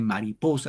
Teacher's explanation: Cuando digo mariposa el acento va en Pos igual de la vocal lo extraigo y lo jaló ahí Rosa